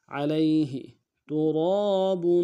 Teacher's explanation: با کے اوپر تنوین ہے، غنہ کریں گے